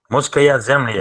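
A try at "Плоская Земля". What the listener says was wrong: Ploskaya. P. First letter is P. Ploskaya. Ploskaya. Second letter is L. Lima.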